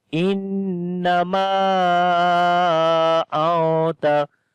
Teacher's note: After the noon sakin, the next letter is ta. So we make ikhfa. We hide the sound of noon